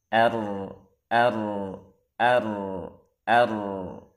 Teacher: jangan banyak takrir jangan juga menghilangkannya tapi samarkan